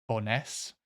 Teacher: the emphasis, like always, or the stress is always on the second syllable in Scottish places. Pretty much always.